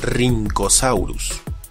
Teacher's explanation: Algo similar le ocurre a la RH, pues recibe una pronunciación con una R marcada, como la doble R del alfabeto escolar de antaño